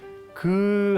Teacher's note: 기역은 우리가 이제 어금니 소리 그 할 때 나는 소리입니다